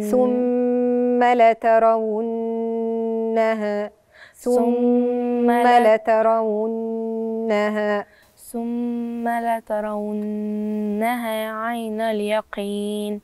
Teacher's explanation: والنون مشددة عندي في وسط الكلمة، وهنطقها أديها الغنة بتاعتها.